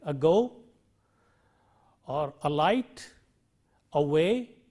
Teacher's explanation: schwa, which is that is the vowel, short vowel which occurs in unstressed syllables in English, a word as in ago, or alight, away.